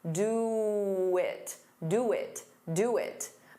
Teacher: And do it, to get rid of that pause, you can add a very soft w.